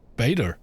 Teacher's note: the soft T, which America's gone even further with the soft T to the point where it almost sounds like a D. So we say beta, and Americans say beta.